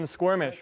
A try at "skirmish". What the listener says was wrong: it's s-k-i there's no you're saying squirming